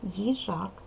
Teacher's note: наголошений другий склад перший ненаголошений